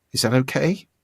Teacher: you finish a sentence as if it were a question, when in fact it's a statement. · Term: questioning intonation